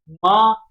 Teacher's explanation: म का उच्चारण कर रहे हैं तो तो ओष्ठ से निकल रहा है